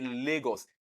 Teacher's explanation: When you say Lagos, you notice that the sound la in Lagos is coming from one side of the mouth. That is a lateral sound.